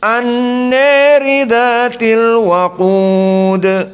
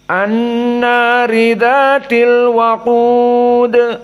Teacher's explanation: Maka di sini Abu Amr dari dua riwayat As-Susi dan Ad-Duri dibaca dalam keadaan Al-Imalah Al-Kubra. Dan jumhur di sini dibaca dalam keadaan fathah.